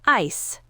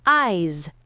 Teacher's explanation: Ice ends with an unvoiced s sound, short vowel, ice. Eyes ends with a voiced Z sound, long vowel, eyes.